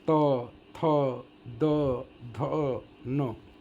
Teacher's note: जैसे त बोलते ही देखना ये जीभ जाकर के दांत में मारता है ऊपर और तब ये बाहर आवाज़ आ जाती है, इसलिए दंत से इसका उच्चारण होता है। तो अगर बिना मारे तो नहीं बोल सकते, बिना दांत में टच किए।